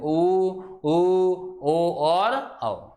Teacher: ऊ पे जीभ के पीछे वाला भाग क्या एकदम से उठेगा या एक्टिव बनेगा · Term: पश्च स्वर